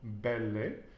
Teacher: I'm still practicing my V's, which are pronounced like a B